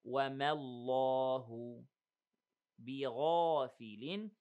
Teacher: the ghain and the alif are heavy